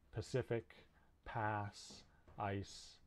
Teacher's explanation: it represents the s sound which is voiceless it's a fricative meaning air is flowing past the constriction in the vocal tract but it's making a hiss hissing sound as it goes and it's produced at the alveolar ridge in english it's normally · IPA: /s/